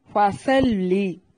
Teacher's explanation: صاد کو موٹا، لام کو باریک پڑھنا ہے، لمبا نہیں کرنا۔